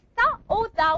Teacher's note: Tip of the tongue plus the upper teeth.